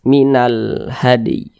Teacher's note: perhatikan di samping huruf ha termasuk salah satu huruf qamariah maka alif lam berjumpa dengan huruf ha hukumnya adalah alif lam qamariah maka e huruf lamnya ini dibaca izhar jadi dia terbaca jelas